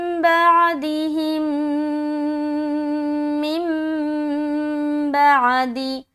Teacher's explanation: میم ساکن کے بعد دوسری میم ہے تو یہاں پر ادغام شفوی کا قاعدہ ہے، یہاں پر غنے کے ساتھ پڑھیں گے